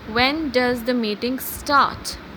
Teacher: when I say start, the voice is going upward. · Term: rising intonation